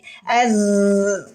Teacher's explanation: huruf z ujung lidah kita menyentuh gigi seri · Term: suara desis